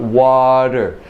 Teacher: my tongue goes up only very briefly